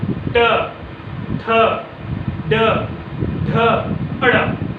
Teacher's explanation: आपका जीभ मुड़ेगा और मूर्धा को छुएगा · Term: मूर्धन्य व्यंजन